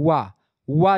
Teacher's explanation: वा जो होता है ये दंतोष्ठ है, यानी दांत और ओठ दोनों, आधा ओठ और मतलब दांत दोनों होता है इसमें।